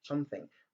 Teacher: le son G et le son T se rencontrent et le son G, donc, est omis